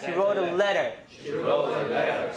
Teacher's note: this is a light L your tongue is really tense